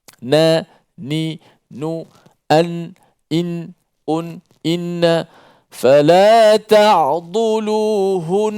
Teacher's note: Tak perlu buat apa-apa, terus saja hujung lidah tu ditekankan kena pada makhraj nun dan dipanjangkan bunyi suara gunnah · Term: wajibul gunnah